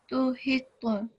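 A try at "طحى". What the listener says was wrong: But this is a thick letter. So this one you have to make thicker. Tuhita.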